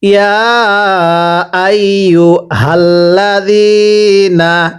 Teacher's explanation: এই হাগুলো উচ্চারণ করার সময় গলার মাঝখান থেকে আওয়াজ করে পড়তে হবে